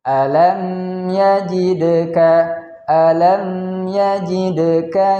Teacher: Kemudian selanjutnya yajidka, ada huruf dal sukun, maka hukumnya adalah memantul, yaitu dalnya berharokat sukun kita baca dengan bacaan mantul, yaitu hukumnya adalah qalqalah, yaitu kita baca dengan bacaan yang memantul.